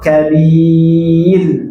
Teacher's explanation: Bir tipis. Ya karena sebenarnya kasrah.